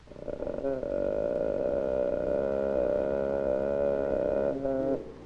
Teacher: Acoustic measurements of the voice reveal a subharmonic of 75 cycles per second, 1/2 the fundamental frequency of the sound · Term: vocal fry